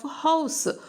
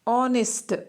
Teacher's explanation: So here, though H is in that word, H, that word, though it begins with H, HONEST, but when we are pronouncing that word, H is completely silent. We do not pronounce H at all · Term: silent H